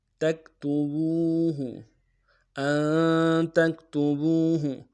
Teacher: با کو واو کے ساتھ ملانا ہے، واو مدہ ایک مقدار میں کھینچیں گے